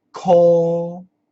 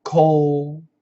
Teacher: So you can use a light L, cold, or a dark L, cold.